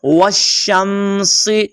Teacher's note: آپ نے نہ الف کو پڑھنا ہے نہ لام کو پڑھنا ہے